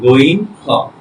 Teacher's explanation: হলকের শেষ হইতে গইন এবং খ